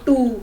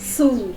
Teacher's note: Alveolar sounds are made by raising tip of the tongue towards the ridge that is right behind upper front teeth. जो ऊपर के आगे वाले दांत है उसके नीचे का एरिया, called alveolar ridge.